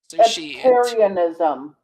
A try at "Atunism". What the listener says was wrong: There's no R. It's a Tunism.